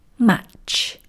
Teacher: we're going to start the tea, but we're not going to finish the tea with that little puff of air. That's what I mean when I say that we're going to do about half of the T sound.